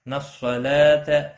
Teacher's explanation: لام کے اوپر کھڑی زبر ہے، ایک الف کے برابر کھینچ کر پڑھیں گے، تا کو کھینچنا نہیں